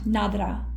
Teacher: quite often at the end you don't hear the H sound when you have a chy it's just a a sound nadra